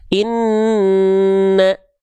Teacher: Suaranya masuk ke dalam rongga hidung sehingga sengau. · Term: gunnah